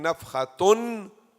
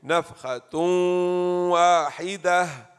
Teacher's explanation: Tanween followed by waw, that's called idgham ma'al ghunna. You merge the noon of the tanween into the waw